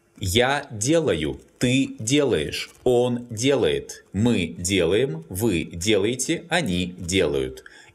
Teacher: In all forms, the stress falls on the stem.